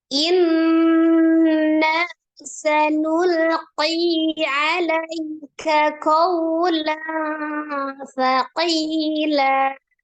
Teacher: Jadi mad iwad. Fathah tanwin berubah menjadi fathah 2 harakat